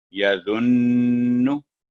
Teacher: नून पर 2 सेकंड का गुन्ना होगा जब वक्फ नहीं होगा। यदुन्नु, जब वक्फ पढ़ेंगे यदुन।